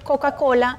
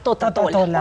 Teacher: es el sonido de la K, Ko, Q y el niño lo sustituye por Ta, Te, Ti, To, Tu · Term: error de sustitución